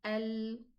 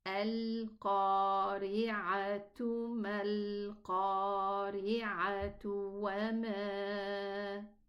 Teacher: When you end with a ta marbuta like this, if you stop on it, we are going to pronounce it as a ha, and when we connect, it's going to be pronounced as a ta.